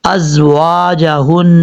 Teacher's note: یہ زا جو ہے سیٹی کے ساتھ پڑھا جائے گا ، واو کو پڑھتے وقت ہون گول کریں گے، ہا بھاری